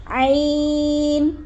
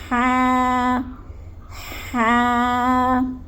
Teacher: عین اور ہا یہ دونوں حلق کے درمیانی حصے سے ادا ہوتے ہیں